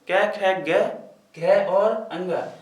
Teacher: इसके सभी 5 जो हैं, क्यों कहते हैं, क्योंकि ये जो 5 वर्ण हैं जब इनको बोलते हैं तो इनके जो है ये कंठ के द्वारा बोले जाते हैं, जो गले के अंदर स्थित होता है उसके द्वारा बोले जाते हैं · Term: कंठीय व्यंजन